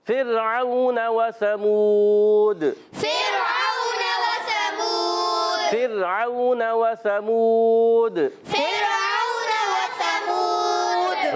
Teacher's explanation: را ساکن سے پہلے زیر ہے، را کو باریک پڑھیں گے